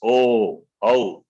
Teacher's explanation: it also starts from it starts from the throat ends with the lips oh oh therefore they are they've got two places of pronunciation